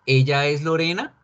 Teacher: Cogemos una oración normal, positiva, y le subimos la voz al final y ya quedó convertida en pregunta.